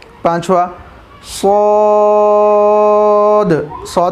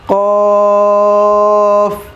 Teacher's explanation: قاف کو کھینچنا ہے کیونکہ مد کا نشان ہے